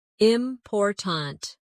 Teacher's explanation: in the word important, we stress the second syllable, important. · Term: word stress